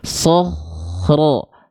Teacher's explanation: antara bunyi kho sukun dengan ro tidak boleh ada jeda hening